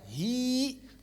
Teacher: Ma saat wakaf aslinya hiya saat wakaf dibaca hi dengan vokal bukan dengan konsonan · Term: vokal panjang